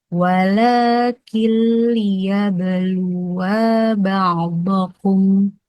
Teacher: memasukkan atau meleburkan nun sukun atau tanwin tanpa disertai dengan dengung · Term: idgham bila gunnah